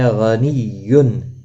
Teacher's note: غائن مستعلیہ ہے، غنیٌ، تنوین کے بعد حلقی ہا آیا ہے، اظہار حلقی ہوگا، گنہ نہیں کریں گے، می یا مدہ ہے، ایک الف کی مقدار کے برابر کھینچ کر پڑھیں گے، دال ساکن پر قلقلہ ہوگا وقف کی صورت میں۔